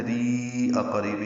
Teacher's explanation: را کو لمبا کریں گے 4 حرکات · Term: مد منفصل